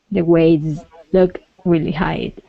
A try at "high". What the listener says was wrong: Okay, now at the end of high, you're producing a sound sort of like a D or a T maybe. Okay, saying hide. Okay, try and end on that I sound. High.